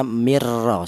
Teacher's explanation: Idgham itu menyatu artinya yaitu cara bacanya nun mati tadi ee langsung disatukan ke huruf ro ini ya